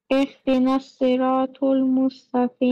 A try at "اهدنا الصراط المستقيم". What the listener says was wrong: Ihdina Siratul, not Tul, it is Zabar, not Pesh. Ihdina Siratul Mustaqim